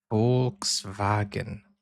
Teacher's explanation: the V in German sounds like a F, and the W sounds like a V